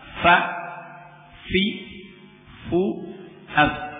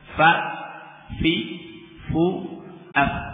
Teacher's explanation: Antara yang pertama adalah fa dari tarf ujung gigi seri yang atas dengan batnus syafah, dengan bibir bagian dalam. Ya. Bibir masuk batnus syafah, perutnya bibir, ya, bagian dalam.